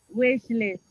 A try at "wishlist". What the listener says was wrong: Then you forgot the W goes into a V. Vestline.